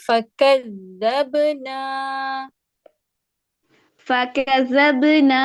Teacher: فا کو آپ کھینچیں گے نہیں فا کے اوپر زبر ہے